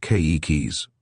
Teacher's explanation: Here's how you say children in Hawaiian, keikis, with the accent on the first syllable.